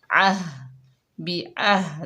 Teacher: आइन को हलक के दरमियान से अदा करेंगे, हा को सीने से अदा करेंगे।